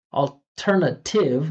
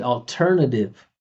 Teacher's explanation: That flap T sound doesn't just make me sound American. It tells the listener that it's unstressed.